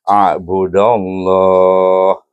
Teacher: Jadi hamzah alif ain a bawa budal alif da bertemu dengan kalimah Allah, idgham syamsikan dia, dan oleh kerana dal berbaris alif maka dibaca dengan tebal dan dibaca dengan mad